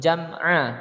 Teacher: Jam'a bukan jam'u tapi jam'a karena dia ini bukan huruf qalqalah ya, tidak boleh memantul. Jam'a, ainnya jelas, bukan an tapi a ya, dipanjangkan 2 ketukan